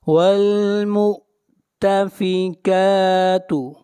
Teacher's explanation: کاف کو کھینچ کر پڑھیں گے ایک الف کے برابر